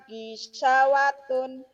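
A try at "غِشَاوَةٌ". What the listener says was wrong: Sanya panjang, sanya besar, gisya. Harus jelas baca mana panjang, mana pendek.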